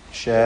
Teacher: ഷാ, ഇതിലുള്ള ദീർഘം മദ് മുത്തസിൽ വാജിബാണ്, നിർബന്ധമായും 4-5 ഹറക്കത്തിൻ്റെ അളവിൽ അലിഫിനെ ദീർഘിപ്പിക്കുക. ശേഷം ഹംസ അതേ പദത്തിൽ തന്നെ വന്നു എന്നതാണ് കാരണം.